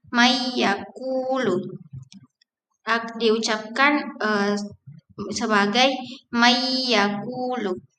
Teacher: Huruf ya dalam kasus ini nun dilebur dengan suara dengung atau nasal. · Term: idgham bigunna